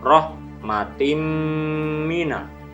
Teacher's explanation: bertemu huruf mim dibaca melebur dan berdengung minimal dua harokat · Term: Idgham Bighunnah